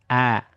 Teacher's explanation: Hamzah itu ada di bagian pangkal tenggorokan ya. Tenggorokan yang paling bawah di pita suara